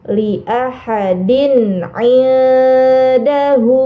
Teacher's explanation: harokat kasrohtain bertemu dengan huruf ain. Ini dinamakan izhar halqi. Maka kasrohtainnya harus dibaca jelas.